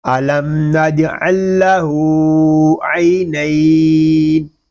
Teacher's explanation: یہاں وقف میں قاعدے ہوں گے مد لین عارض اور وقف بالاسکان. یہاں مد لین عارض اس لیے ہو رہا ہے کہ یا لین کے بعد عارضی سکون آ گیا ہے.